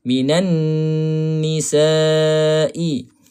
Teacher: huruf nun bersabdu kita kena dengung lah. Dengung di sini 2 harakat paling kurang. 2 harakat kena dengung.